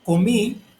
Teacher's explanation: lleva acento en la última sílaba, que es, o última vocal, que es en la I.